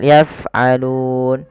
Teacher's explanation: Alirkan nafas di lafal fa. Jangan sampai yaf'alun tapi yaf'alun.